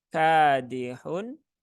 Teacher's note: dua harakat ya ini sering lupa di sini terbaca satu harakat ini ada Alif ya setelah fathah maka kafnya terbaca dua harakat